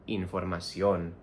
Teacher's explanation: Even though in English we say information, we stress the third syllable, we have to stress the O in información, not información like information, información.